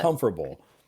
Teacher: Some people will not pronounce the T as the T will be silent.